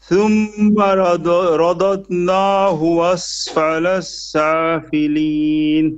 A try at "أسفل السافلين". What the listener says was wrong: Asfala safilin. No shadda on the scene.